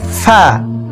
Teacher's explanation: নিচের ঠোঁটের পেট সামনের উপরের 2 দাঁতের আগার সঙ্গে লাগিয়ে একটি হরফ উচ্চারিত হয়: ফা। ফা এই হরফটির মধ্যে 5টি সিফাত রয়েছে: হামস, তাওয়াসসুত, ইস্তিফাল, ইনফিতাহ, ইদলাক।